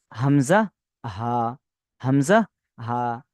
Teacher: মাখরাজ হালাকের বা কন্ঠনালীর শুরু হতে উচ্চারিত হয়